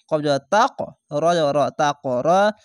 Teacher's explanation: কফের উপরে সাকিন তার জন্য কলকলা হবে ধাক্কা মেরে